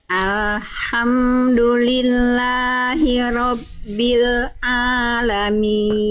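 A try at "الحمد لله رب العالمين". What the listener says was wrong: bagus lam sukunya enggak memantul tapi ainnya jangan jadi Kagok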